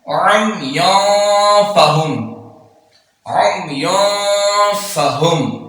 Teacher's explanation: नून तनवीन के बाद फा रहा है तो यहां इख्फा हो रहा है